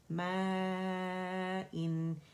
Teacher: حمزہ clear نکلے گا اقصى الحلق سے